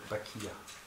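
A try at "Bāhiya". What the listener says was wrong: not Bakiya, but Bahiya. No, Hiya. Hiya. Bahiya.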